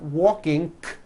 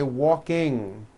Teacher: Ing comes out of your nose. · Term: NG ending